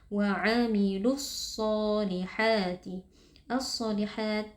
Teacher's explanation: alif lam bertemu dengan huruf Shad hukumnya Alif lamnya dileburkan atau diidamkan ke dalam Shad kemudian Shad merupakan huruf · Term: alif lam syamsiah